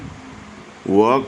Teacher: व का उच्चारण स्थान दंतोष्ठ होगा दांत और ओष्ठ दोनों द्वारा